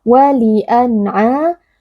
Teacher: Cara membacanya nun sukun dibaca dengan jelas tanpa berdengung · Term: izhar halqi